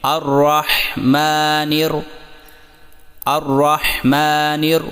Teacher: میم پر کھڑی زبر کو 1 الف جتنا لمبا کریں